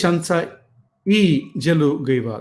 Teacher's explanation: accusative case is marked by a high tone on the pronoun e